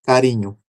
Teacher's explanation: um R rápido, que a gente chama de TEP, e eu mudo esse som para carrinho, que é o som de carro, é outro R, né?